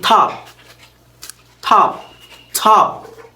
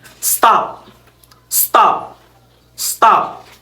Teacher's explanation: post-aspirated T, as in top, top, top. And next is the unaspirated T, as in stop, stop, stop.